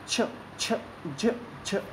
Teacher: आपको लगेगा आवाज़ घिसके जा रही है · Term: स्पर्श संघर्षी